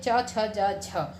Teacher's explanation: तालव्य व्यंजन जिन्हें बोलते हुए हमारे तालु पर हमारी जीभ टच होती है